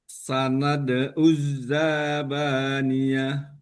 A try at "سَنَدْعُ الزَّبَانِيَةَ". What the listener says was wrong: oke, zanya pendek saja. Yang panjang adalah ba. Uzzabaniyah. Oke, oke, lihat lagi panjang pendeknya. Zabaniyah. Az-zabaniyah. Zanya pendek.